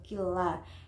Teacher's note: non sukun bertemu lam berarti idgham bila gunah. Cara membacanya yaitu dimasukkan ke huruf lam, jadi non sukunnya itu tidak dibaca langsung killa.